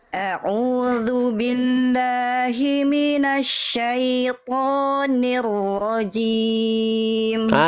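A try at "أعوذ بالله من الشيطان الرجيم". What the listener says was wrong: Bagus, tinggal jim, jangan cim. Jim nggak punya sifat hams. Dia tidak mengalirkan nafas. A'udzu billahi minasyaitonir rajim. Jim, jangan cim.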